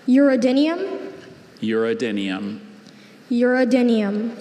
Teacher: Second syllable, that second vowel. It's a schwa.